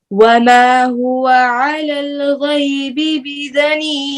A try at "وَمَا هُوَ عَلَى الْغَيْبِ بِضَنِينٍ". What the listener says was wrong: ضاد کو پر کریں وَمَا هُوَ عَلَى الْغَيْبِ بِضَنِينٍ